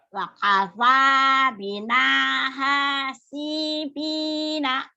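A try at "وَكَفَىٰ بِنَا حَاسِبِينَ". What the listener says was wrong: Yang panjangnya sedikit lagi tuh ya. Wakafa bina hasibina. Nih yang panjang. 4 yang panjang.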